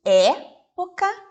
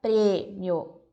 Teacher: A palavra época tem o som representado pelo E aberto, então nós falamos época, e em prêmio ela é fechada, então nós temos a palavra prêmio.